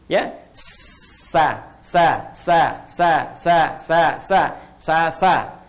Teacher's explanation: Kalau yang tadi mendekat, mau nempel, ini ke bawah. Jadi, ketika dia bunyinya ke bawah, tidak muncul seperti o lagi. Tapi netral, jadi a. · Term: istifal